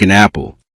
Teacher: You see an apple, but you may hear something closer to an apple. The N sound connects with apple, so your ear may feel as though the second word begins with N.